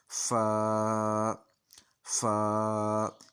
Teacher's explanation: ये फ़ा और अलिफ की मजमुआ है इसकी आवाज़, तो इसने 1 अलिफ के बराबर लंबा हो जाना है, और ऊपर वाले सामने वाले जो दांत हैं जब नीचे वाले होंठ को टच करेंगे तो फ़ा की आवाज़ आ जाएगी। फ़ा, यहाँ समझें कि नीचे वाले होंठ को हमने ऊपर वाले दांतों के साथ लगाना है, तो फिर फ़ा अदा होना है।